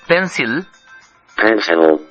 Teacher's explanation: এবং আমাদের ল আর ইংরেজি ল যে এক নয় তা আমরা আগেই বলেছি। ইংরেজি লটা উচ্চারিত হবার সময় জিহ্বার দুই পাশ দিয়ে বাতাস আরো বেশি বের হয়ে যায়, ফলে সেই ল আরো বেশি তরল।